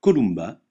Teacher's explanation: le M se prononce me comme dans mulot jamais nasalisé comme dans emporté